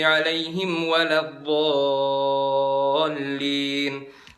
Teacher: Di bagian olin, ngangkat sejenak itu namanya naber.